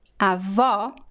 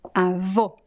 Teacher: the open O, as in the word avó, and the closed O, as in the word avô.